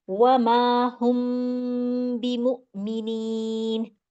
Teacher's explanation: उसके अगला वर्ड जो है हमारे पास बी मुमिनीन में बा आ रहा है लफज़। तो इसमें मैंने मीम को अपने होठों में छुपाना है और बा को अदा भी करना है